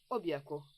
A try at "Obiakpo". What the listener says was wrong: Au fait, ta façon de dire Obiakpo, tu sais, j'aimerais que tu utilises une voix un peu plus romantique pour prononcer ce Obiakpo. Pas Obiakpo comme si on allait à la guerre. Obiakpo.